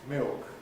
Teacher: the new habit of vocalizing the L beginning to come in may mean that this ceases to be a consonant cluster and gives us instead a new diphthong as milk. You have to make a judgment whether we have yet reached the stage when you can allow your students to say milk in common with millions of people in the southeast of England.